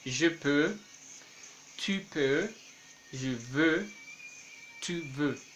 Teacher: Dans la conjugaison des verbes pouvoir et vouloir, dans la première et deuxième personne de présent de l'indicatif, en el presente del indicativo, tanto de pouvoir como de vouloir, no vamos a pronunciar esa X, vamos a decir je peux, tu peux, je veux, tu veux.